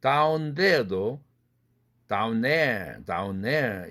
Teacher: 은 다음에 느가 올 때에는 중복자음 탈락 현상을 일으키지 않고 그냥 다 발음한다